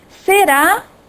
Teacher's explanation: Ra, em será, sílaba tônica